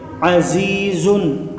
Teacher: حرف مدہ کو ایک الف یعنی دو حرکات کے برابر کھینچ کے پڑھیں گے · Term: یا مدہ